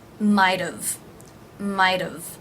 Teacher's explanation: the T here is going to be pronounced as a flap T so it'll actually sound like a d